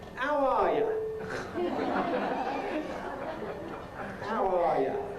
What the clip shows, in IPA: æʊ ˈɑː jə